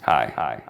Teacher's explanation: Listen to the extreme performative vocal fry.